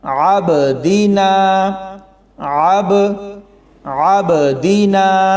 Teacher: با کے اوپر جزم ہے اور با حروف قلقلہ ہے، تو اس پر ایسے قلقلہ ہوگا عبدینا، عبدینا، یعنی قلقلہ کی مقدار تھوڑی کم ہے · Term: قلقلہ صغیرہ